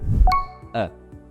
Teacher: the schwa is the relaxed sound uh. It's short, it's soft, and it's everywhere. In fact, it's the most common sound in the entire English language. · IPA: /ə/